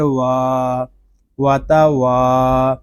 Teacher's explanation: یہاں واو کو ایک الف تک کھینچ کر پڑھیں گے کیونکہ یہاں پہ الف مدہ ہو رہا ہے